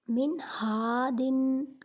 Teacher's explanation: کیونکہ نون ساکن کے بعد ہا حروف حلقی میں سے آ گیا، اسی لیے اس نون کو ظاہر کر کے پڑھیں گے